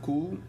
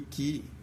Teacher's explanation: É o fonema K, que, conforme aquilo que o rodeia, toma diversas características combinatórias, nomeadamente um caráter mais posterior antes das vogais posteriores e mais anterior antes das vogais anteriores, sobretudo antes de um I.